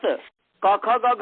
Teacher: जिह्वा का मूल कंठ को पूर्ण रूप से स्पर्श करता है